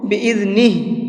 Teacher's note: جب ہم یہاں پر وقف کریں گے تو ہا کو ساکن کر دیں گے، اس لیے میں نے اس کو بِإِذْنِهِ پڑھا ہے، ٹھیک ہے۔